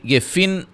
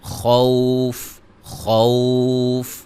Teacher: تو خوفن، یہ فن دو زیر اصل ہیں، ٹھیک ہے، لیکن جب ہم یہاں وقف کریں گے تو دو زیریں ختم ہو جائیں گی اور فا کے اوپر جو سکون ہوگا وہ عارضی طور پہ آ جائے گا